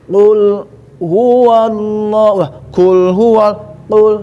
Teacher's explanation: Huruf qaf, pangkal lidah paling ujung itu yang terangkat dengan sifat harus terangkat.